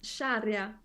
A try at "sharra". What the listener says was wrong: Interesting, she added a E. She said sharia. I would say sharra, just like it's written here.